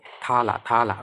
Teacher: উপরের পাটির দাঁতের সাথে কিন্তু আমাদের জিহ্বাটা লাগছে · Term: দন্ত ব্যঞ্জনধ্বনি